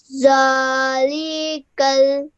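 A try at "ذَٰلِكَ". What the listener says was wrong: Okay, do not elongate the lam with the kasra. It's just a simple kasra. So just 1 second rule.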